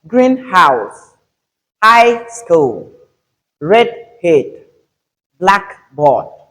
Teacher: for adjective plus noun compounds, we have the stress on the first syllable